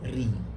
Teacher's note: Dia tak boleh baca woi, ya, ataupun ri, tak boleh. Maka diperlahankan ataupun dikurangkan sedikit sifat takrir itu. Dia masih ada tetapi sedikit kurang. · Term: nipis